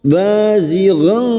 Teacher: Bazighan fathah tanwin bertemu qaf ikfa hakiki, kita samarkan bunyi fathah tanwin dan mendengung selama 3 harakat. Bazighan qala, qaf fathah diikuti alif, 2 harakat mad tabi'i.